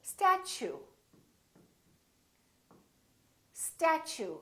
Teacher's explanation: show you we don't say step two we say statue statue so the T you sound like chu so it almost sounds like chew I chew my food statue let's try a few more words